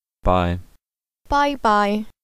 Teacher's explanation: it's pronounced with a highlevel and then a midlevel tone